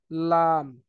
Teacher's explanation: জিহ্বার আগার কিনারা সামনের উপরের দাঁতের মাড়ির সঙ্গে লাগিয়ে